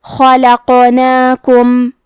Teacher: کلمت خلقناکم میں حرف الخا ہے، خا کی ادائیگی حلق کے اوپر والے حصے سے ہے، خا حروف تفخیم میں سے ہے، تو ہم یہ حرف کو موٹی آواز میں پڑھیں گے۔ · حرف القاف پہ جزم ہے، یہاں قاف کا حکم ہے قلقلہ